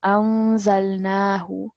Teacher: So we are going to be doing ikhfa over here. So noon will be with a nasal sound and pausing slightly as well